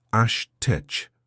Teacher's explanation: The word is Ashtay, pronounced Ashtech, with emphasis on the second syllable